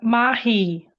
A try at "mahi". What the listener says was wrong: Perfect. Yes, mahi.